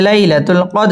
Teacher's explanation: দাল কলকলার হরফ ধাক্কা দিয়ে পড়তে হবে